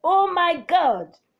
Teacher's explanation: Exclamation and interjection with a falling tone.